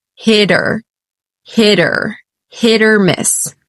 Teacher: it's a flap T that sounds like a d it's quite quick · notice here how the T at the end of Hit connects with the vowel that follows hitter hitter hit or miss right it's a flap T that